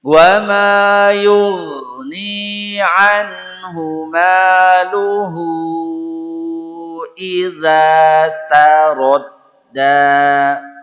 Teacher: Hu-nya dipanjangkan, mad silah tawilah namanya